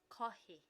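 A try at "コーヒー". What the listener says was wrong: Not ka. Ko. Kohi. Kohi.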